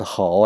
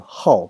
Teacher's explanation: This is not 好 anymore. It's actually now changed its pronunciation in this word to 好, the fourth tone.